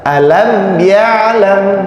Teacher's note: mim sukun bertemu dengan iya, ini izhar syafawi. Jadi dibacanya jelas